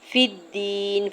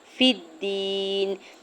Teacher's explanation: فا کی زیر کو دال مشدد کے ساتھ ملاتے ہوئے پڑھنا ہے، فا دال زیر فی دا یا زیر دی، فی الدین۔